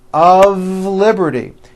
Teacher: mistake even though the word of is spelled with an F we pronounce the word of with a voiced V · notice how I connected the word of with the word Liberty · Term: of exception